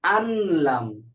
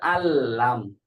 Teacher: এখানে আছে আনলাম মূলত, কিন্তু পড়তে হবে আল্লাম, আল, সরাসরি লামের সাথে যুক্ত হয়ে যাবে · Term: ইদগাম বেগয়রি গুন্না